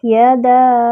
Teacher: یعنی زبان کا درمیانی حصہ اوپر تالو کے درمیانی حصے سے لگے تو یا ادا ہوتی ہے۔ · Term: یا کا مخرج